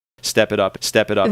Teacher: The T in it becomes a flap T sounding more like a soft D sound. D. It sounds more like step it up it up it up instead of it up.